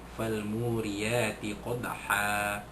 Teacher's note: dal sukun itu dilantunkan lemah bunyinya jadi qalqalah sughra